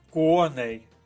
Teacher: наголос паде на перший склад